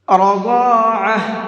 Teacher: را کو بھی اور ضاد کو بھی دونوں کو منہ بھر کے پڑھیں گے، اور عین کو حلق سے نکال کر کے پڑھیں گے۔